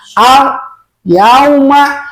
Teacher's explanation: lam mati lidahnya jangan dulu dilepaskan. Sebab kalau cepat dilepaskan lamnya maka timbullah kolkolah.